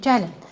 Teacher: Vurğu sona düşdü. Amma əmr edəndə gəlin vurğu əvvələ düşdü.